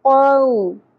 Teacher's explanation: واو ساکن سے پہلے یہاں زبر آ گئی ہے تو یہ حرف لین ہے, نرمی سے ادا ہوگا